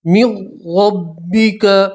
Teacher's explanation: وَهُمْ يَعْلَمُونَ الْحَقُّ من ربک میم کو را سے ملائیں گے نون ساکن کا را کے اندر ادغام کریں گے ٹھیک ہے تو یہ نون ساکن نہیں پڑھیں گے میم کو سیدھا را سے ملائیں گے را کو موٹا پڑھیں گے را کے اوپر زبر ہے اس لیے من ربک فلا تکونن